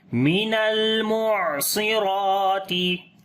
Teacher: صاد کو موٹا پڑھیں گے، را کو بھی موٹا پڑھیں گے